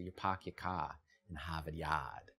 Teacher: the Boston accent does is it drops the rhodic r that r that follows a vowel